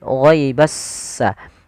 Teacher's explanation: Alif lam syamsiyah adalah alif dan lam yang dia ditulis tapi dia tidak dibaca huruf lamnya. sehingga langsung diidghamkan ke huruf setelahnya yaitu huruf sin, sehingga langsung di huruf sinnya bertasydid, ghaibassa.